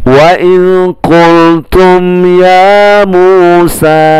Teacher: mim sukun bertemu ya berarti dibaca tidak dengung atau bacaan normal, tidak ada yang berubah bacaannya